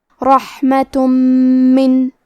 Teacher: پھر حرف المیم ہے کلمت من. میم حروف الادغام بغنہ میں سے ہے، تو ہم یہ حکم کو غنہ اور تشدید کے ساتھ ادا کریں گے